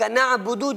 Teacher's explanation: نعبد عین ہے، اس کو حلق سے نکالنا ہے